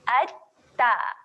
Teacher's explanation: Tahankan di belakang gigi atas. Hujung lidah tahan di belakang gigi atas, kemudian kita lepaskan nganga. · Kita kena gandakan huruf ta. Seolah-olah dia ada dua huruf ta. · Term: sabdu